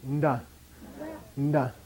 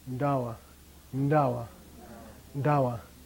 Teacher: A slight N sound before the D. Okay, very slight. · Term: pre-nasal